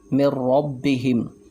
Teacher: نون ساکن ہے، آگے را آ رہا ہے، تو ہم نے یہاں بغیر غنہ کے ادغام کیا